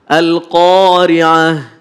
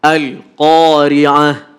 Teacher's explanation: Jadi enggak boleh ada pantulan. Karena huruf lam itu bukan bagian dari huruf qalqalah.